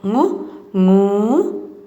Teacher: Touching your back of the tongue to the top, you can make this sound.